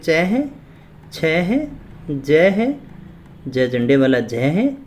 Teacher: इन सभी का जो उच्चारण स्थान है वो है हमारा तालु। अपने इनका तालु का इस्तेमाल करते हुए बोलते हैं, और इसीलिए इन्हें कहा जाता है तालव्य ध्वनि।